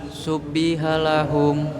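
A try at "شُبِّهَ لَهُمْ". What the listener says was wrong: Pelan-pelan, baknya ditasjid, ditekan. Bukan ditekan, ditahan. Syubbiha lahum.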